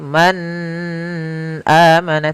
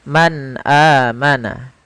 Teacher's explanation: suara nunnya harus jelas, tidak boleh ditahan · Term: izhar